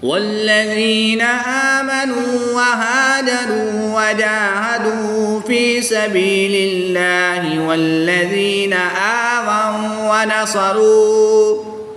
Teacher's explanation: والذین آمنوا وہاجروا وجاہدوا فی سبیل اللہ والذین آووا ونصروا، یا ساکن سے پہلے غال کے نیچے زیر ہے تو یہاں پر یا مدہ ہوگا، ایک الف یعنی 2 حرکات کے برابر کھینچ کر پڑھیں گے۔ واو ساکن سے پہلے نون پر پیش ہے تو واو مدہ ہوگا، ایک الف یعنی 2 حرکات کے برابر کھینچ کر پڑھیں گے۔ الف سے پہلے ہا پر زبر ہے تو یہاں پر الف مدہ ہوگا، ایک الف یعنی 2 حرکات کے برابر کھینچ کر پڑھیں گے۔